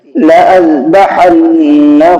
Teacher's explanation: نون پر تشدید ہے تو غنہ ہوگا، اور ہا کے اوپر الٹا پیش ہے تو ہا کھینچ کر کے پڑھا جائے گا، اور یہاں پر الف نہیں پڑھا جائے گا۔